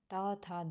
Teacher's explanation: जब भी ता, था, दा बोलेंगे तो हमारी जीभ किससे अटैच करेगी? हमारे दांतों से। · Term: दंतत्व